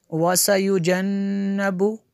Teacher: یہ نون مشدد ہے، یہاں پہ غنہ ہوگا